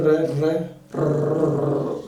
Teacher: देखिए रे बोलिए, रे रे रे बोलने से जो है ये हमारी जीभ जो है कंपन पैदा करती है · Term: प्रकंपित